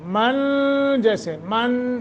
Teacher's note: اخفا جو ہے وہ مطلق لمبا تو کرنا ہے لیکن آواز کو ناک میں چھپا کر